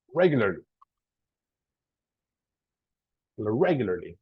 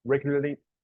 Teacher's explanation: In the beginning goes the stress, so regularly.